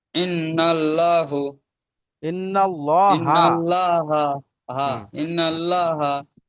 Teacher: আল্লাহর শব্দের ডানদিকে জবর এসছে তাই আল্লাহর লামকে পুর করে পড়তে হবে